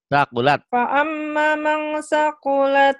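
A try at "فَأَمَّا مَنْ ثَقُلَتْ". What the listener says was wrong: Fa'amanya ditahan. Fa'amma. Kan ada mad tuh. Ada hijau. Mang.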